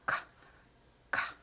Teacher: Un sonido velar oclusivo que existe en portugués